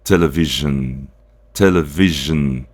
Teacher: Então, a gente substitui o S aqui, esse S aqui vai ser representado pelo J, né? Porque ele vai dar esse som J.